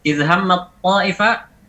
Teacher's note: suaranya sudah menjadi huruf ta. Memang benar-benar sudah berubah menjadi ta.